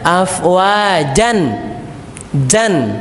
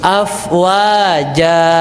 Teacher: Ketika harokat terakhirnya in atau un, maka dia kembali ke hukum asalnya. Tapi kalau dia harokat terakhirnya fathatain an, maka bacaannya menjadi panjang. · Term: waqaf